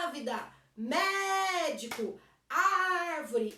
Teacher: a antepenúltima sílaba é a mais forte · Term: proparoxítonas